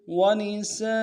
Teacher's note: ونساء، ونساء میں واو کو نون سے ادا کریں گے، سین کے ساتھ الف مدہ ہے، الف مدہ کے اوپر مد اصلی ہے، کم سے کم 3 دار میں کھینچیں گے، کے اوپر تنوین غنہ کریں گے۔